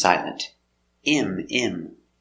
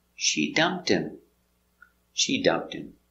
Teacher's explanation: the H is silent